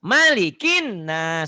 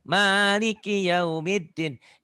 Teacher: Maknya pendek di sini. Kalau di Fatihah panjang.